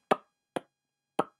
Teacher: everyone's favorite bilabial click, which is just smacking your lips together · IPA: ʘ